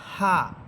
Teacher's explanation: বাতাস বের হবে, বাতাসের কোনো শব্দ হবে না, স্বাভাবিকভাবে বাতাসটা বের হয়ে চলে যাবে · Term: গোল হা